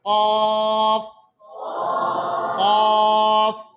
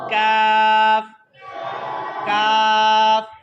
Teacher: تو قاف کو موٹا پڑھیں گے, کاف کو باریک پڑھیں گے